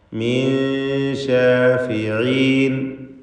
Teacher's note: ഇതിൽ മിൻ ശാഫിഈൻ എന്നതിലെ സാക്കിനത്തായ നൂനിന് ശേഷം ഇഖ്ഫാൻ്റെ ഹർഫായ ഷീൻ വന്നതുകൊണ്ട് ഇഖ്ഫാ ഹഖീഖി നൽകി മറച്ചു മണിക്കേണ്ടതാണ്. മണിക്കലിൽ തർക്കീഖാണ് നൽകുക, നേർപ്പിച്ചുകൊണ്ടുള്ള മണിക്കൽ ഗുന്ന മുറഖഖ. മിൻ ശാഫിഈൻ എന്ന് ഉച്ചരിക്കണം.